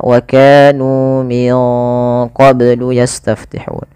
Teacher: ini nunnya disamarkan ke huruf qaf karena dia ada bacaan ikhfa. Di sini ikhfanya ikhfa ab'ad, ikhfa yang jauh, ya, yang jauh daripada makhraj, daripada huruf nun.